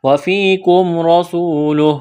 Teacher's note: واو مدہ ہے، واو ساکن سے پہلے پیش ہے، ایک الف کے برابر کھینچنا ہے ، یہاں جب وقف کریں گے تو ہا کو ساکن کریں